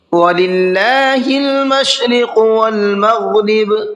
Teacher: اللہ کے لام کو باریک کر کے پڑھنا ہے، اس لیے کہ اللہ کے لام سے پہلے زیر ہے